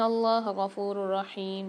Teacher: ان اللہ غفور الرحیم، نون میں غنہ کریں گے اور اللہ کے لام کو موٹا بھی پڑھیں گے اور کھینچ کے بھی پڑھیں گے